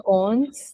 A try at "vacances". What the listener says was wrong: You have to correct your pronunciation for A. It's vacances. Vacances. D'accord, vacances.